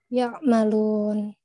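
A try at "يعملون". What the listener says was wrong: Jelaskan ain ya. Aina sifat bainiyahnya sudah dapat, makhraj sudah dapat, teman. Sifatnya masih belum sempurna. Ya'malun. Ya'malun.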